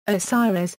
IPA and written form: oʊˈsaɪərɨs (Osiris)